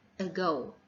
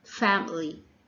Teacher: It has a neutral mouth position. It only appears on unstressed syllables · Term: schwa sound